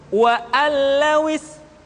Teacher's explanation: Sementara kalau idgham bila gunnah, nun mati tanwin dimasukkan pada huruf lam dan ra yang dihadapannya tanpa harus ditahan